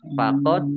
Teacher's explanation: faqod Dal sukun bacaan qolqolah dibaca memantul ditampakkan pantulannya